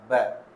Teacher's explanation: ओष्ठे तो वो होते हैं जिनको बोलने में हम होठों का प्रयोग करते हैं, जैसे ब बोलेंगे तो होठ बंद होके फिर खुलेंगे, तो इसमें होठों का प्रयोग हो रहा है।